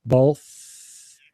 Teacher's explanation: both is a th sound and it's a voiceless th sound both so my tongue is under my two front teeth and